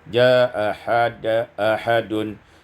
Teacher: Pada ayat yang keenam, jaa ahadun, isqatul hamzatil ula, dibuang hamzah yang pertama menjadi jaa ahadun. Bisa dibaca dengan tawassut, jaa ahadun.